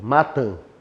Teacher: Na palavra matam, eu tenho encontro vocálico e para ser mais específico ainda, eu tenho um ditongo nasal decrescente.